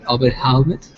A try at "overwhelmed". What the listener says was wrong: Overwhelmed? So the H is silent in this word. So it's not overwhelmed, it's just overwhelmed. Imagine there's no H, okay?